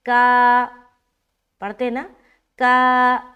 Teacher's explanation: کاف بھی باریک اور الف مدہ کرتے ہوئے الف بھی باریک، کیونکہ کاف باریک حرف ہے